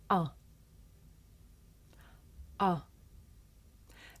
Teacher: this is a short vowel sound it's pronounced ah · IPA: ʌ